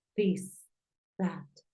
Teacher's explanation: la TH es como una D, como una Z. No es tan fuerte como una T porque es un sonido dental